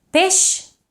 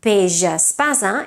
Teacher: Peix is pronounced with a sh, but peix espasa is pronounced with a j.